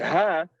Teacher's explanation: when you pronounce ha you constrict the vocal cords to tighten the passage